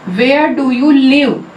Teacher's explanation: Live हमने rising tone के साथ बोला।